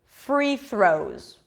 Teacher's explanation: the word free is pronounced with an F sound so you've got to bring the bottom lip to the upper teeth